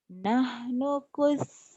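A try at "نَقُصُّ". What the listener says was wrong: Nahnu na-nya ketinggalan. Nakusu bukan nahnu kusu. nakus. Jangan nahnu, jangan panjang. nakusu. Nyamber. bukan nakuso. Nakusu. Ya, so itu huruf Jawa kalau dia berbaris patah. Tapi kalau berbaris doma enggak nakuso. Nakusu.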